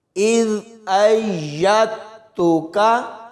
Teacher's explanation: حمزہ کو یا کے ساتھ ملائیں گے تو یا کی آواز آئے گی اور پھر فوراً بعد تا کی آواز آئے گی۔ دال کو ہم نے بالکل بھی نہیں پڑھنا۔